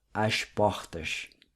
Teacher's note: Another feature of the Carioca accent is the pronunciation of certain R's with a guttural sound